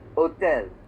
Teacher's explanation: In French, it's the same, but you can see here the way that they write it in French is they pronounce it as hôtel. They don't make the H strong.